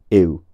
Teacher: a diphthong that glides from I to u, ew. U is a halfway point between those two qualities. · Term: muse vowel